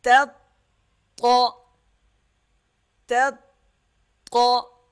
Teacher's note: پہلا تا پتلا پڑھا جائے گا باریک، اور طا جو ہے وہ موٹا پڑھا جائے گا اور سخت بھی ہوگا، ذرا رک کر ادا کریں گے۔